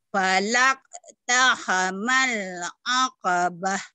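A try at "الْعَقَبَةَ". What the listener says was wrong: Aqabah jangan akabah, aqabah.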